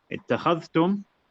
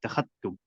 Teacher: So he makes idgham within the letters inside of the word.